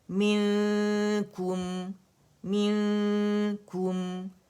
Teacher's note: اس میں میم میں کیا ہے، میم میں ہمارے پاس جہر ہے، میم میں ہمارے پاس توسط ہے، میم میں ہمارے پاس استفال ہے، انفتاح ہے، اذلاق ہے، اور غنہ ہے. تو ایک کاؤنٹ کا جو فطری غنہ ہوگا وہ ہم نے شو کرنا ہی کرنا ہے